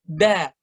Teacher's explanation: Da itu bacanya itu di belakang gigi seri persis. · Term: huruf dal